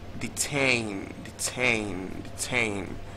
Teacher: Stress on the second syllable